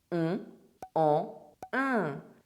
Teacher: The vowel sound is nasalized and we do not pronounce N or M. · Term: French nasal sounds